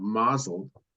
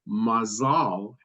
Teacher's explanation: the Yiddish and ashkenazic pronunciation of mael has the stress on the first syllable while the modern Hebrew word mazal has the stress on the last syllable